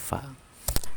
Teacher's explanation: Jadi gigi atas dengan bibir bawah itu baru keluar fa.